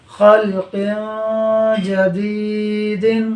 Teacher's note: جیم حروف اخفاء میں سے ہے، لہٰذا اخفاء ہوگا، یعنی قاف کی تنوین میں غنہ ہوگا